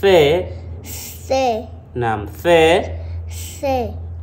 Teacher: Fe unautoa ulimi unaubana na meno